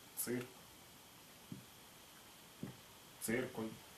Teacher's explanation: Ц – это смешанная буква, образованная из двух компонентов: взрывного буквы Т и щелевого буквы С.